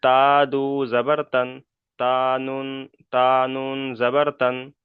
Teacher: তানবিন ও নুন সাকিনের আওয়াজ একই